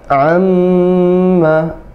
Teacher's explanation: Jadi karena mim bertasydid ditahan 2 harokat.